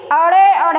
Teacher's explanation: ठीक है, ऐसे ही अड़े अढ़े कहते हैं, तब भी वो जीभ जो है पलट के ऊपर को जाके छूती है, मूर्धा को छूती है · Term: उत्क्षिप्त व्यंजन